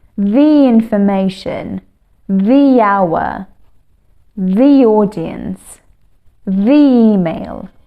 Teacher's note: When we pronounce it faster, like when we're pronouncing a sentence very fast, we kind of link the and the word together and it produces a sound like y